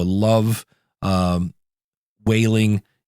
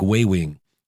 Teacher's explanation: he was making an l sound like a w